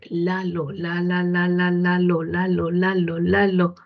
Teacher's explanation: se dará cuenta que su lengua toca los alvéolos. No toca el paladar, no toca los dientes, no toca los labios, no, toca los alvéolos. · En los alvéolos, porque toca los alvéolos. ¿Por dónde sale el aire? Por un lado, por los laterales. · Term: L de Lalo